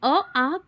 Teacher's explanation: अ आ कंठ से उच्चारण होता है